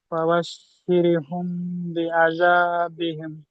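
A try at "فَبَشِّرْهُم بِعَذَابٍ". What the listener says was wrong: জি, মাশাআল্লাহ, সুন্দর পড়েছে।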